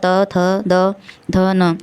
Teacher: इसको बोलते समय वायु का प्रेशर कहाँ पड़ रहा है, दांत पे। तो ये इसका उच्चारण स्थान हो गया दंत। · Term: दंत व्यंजन